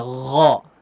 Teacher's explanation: Syarri gha ya, bukan go ya. Bukan huruf G benar tapi ada udara di situ. G yang ada udaranya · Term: huruf ghainnya